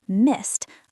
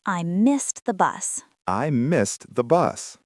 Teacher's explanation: Make sure you hit the T sound at the end of missed. It is a past tense verb ending in ed, but it sounds like a T.